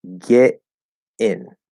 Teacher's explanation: instead of doing a flapped D, we're actually going to do a stop T, a glottal stop T.